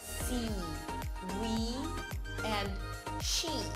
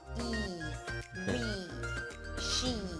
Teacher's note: This sound is the E as in see, we, she. Okay, it's a high vowel. High because the tongue is high. It's a tense vowel because all the articulation organs are really tense. The lips pull to the sides a bit. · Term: E sound